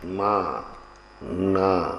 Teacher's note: अब हाँ बिंदी का काम, अनुनासिक जिनको नासिका से लगा, माँ ना, इसमें नाक पर जोर पड़ता है